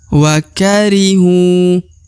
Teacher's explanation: hu di depan nya terdapat wau sukun atau wau mati ya maka hu harus dipanjangkan dua harakat